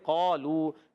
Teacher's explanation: قاف کو موٹا پڑھنا ہے. حرف مستعلیہ میں سے قاف مخرج زبان کی جڑ تعلق نرم حصہ، الف بھی موٹا پڑھیں گے.